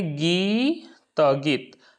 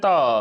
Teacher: गीत केवल बोलेंगे तो इसमें त के साथ जो अ है उसका उच्चारण पूरा पूरा नहीं आ रहा है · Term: अपूर्ण उच्चारण